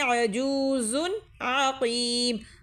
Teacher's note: عین جو ہے حروف ہلکی میں سے ہے اس لیے ہم نے غنہ نہیں کرا ہے